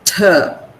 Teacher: The tongue goes up, touches the teeth ridge. The blade of the tongue touches the teeth ridge, and it stops the air over there.